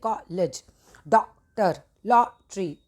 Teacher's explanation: यह आ और अ के बीच की ध्वनि का है। अ इस तरीके से बोला जाता है। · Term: आगत वर्ण